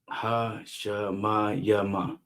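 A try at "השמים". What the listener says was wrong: Hashemayim. I've never seen an instance where you got a ya and a ma together and it's not pronounced together. So it's always going to be yum at the end. Yum. Hashemayim.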